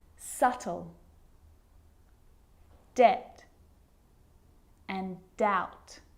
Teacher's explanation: my lips aren't closing and coming together to form the b sound i'm just pronouncing the t subtle debt and doubt now the letter c can cause a